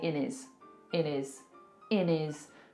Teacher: instead of saying in his we're probably going to say in is in is in is taken away that H completely and we've made it into one word · a lot of the time in the UK we will drop our hes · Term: drop our H's